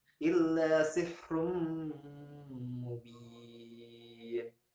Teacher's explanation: hukum bacaan gunnah idgham bi gunnah, yang dimana tanwin di sini adalah dhammah tanwin bertemu dengan huruf mim, maka dibaca dengan illa sihrum mubin, yang diakhiri dengan hukum bacaan mad disukun.